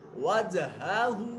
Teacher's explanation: जीम साकिन है, कलकला होगा